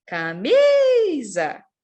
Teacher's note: camisa e peteca boa em camisa a gente tem um acento o acento tônico na sílaba Mi